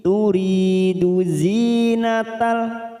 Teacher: turi ada kasrah bertemu ya sukun 2 harokat mad tabi'i